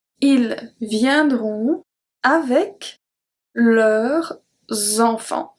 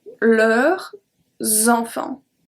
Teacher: Even though we don't pronounce the S at leur, it's going to be transferred to the next word and it's going to make a Z sound.